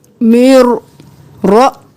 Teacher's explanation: मीम को रॉ में मुदगम किया बगैर गुन्ना के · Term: इदगाम बिला गुन्ना